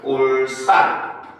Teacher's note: 울산, 우리나라 지명은 거의 대부분이 두 글자의 한자음으로 이루어져 있잖아요. 그래서 한자음 리을 발음 뒤에 이어지는 디귿, 시읒, 지읒이 된 소리로 발음이 되는 경우라고 볼 수가 있습니다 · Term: 된소리 되기 즉 경음화